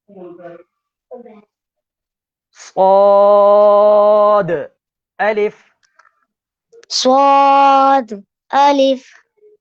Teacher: صاد بھی ناظرین حروف مستعالیہ میں سے ہے تو اس کو بھی پر یعنی موٹا پڑھیں گے